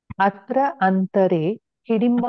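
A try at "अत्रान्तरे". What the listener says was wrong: அந்தரேன்னு பிரிக்கவே கூடாது. அத்திராந்தரேங்கிறது சிங்கிள் வார்த்தை.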